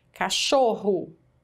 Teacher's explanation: a penúltima é a mais forte